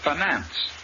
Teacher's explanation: the i in the first syllable is short and the accent is on the second syllable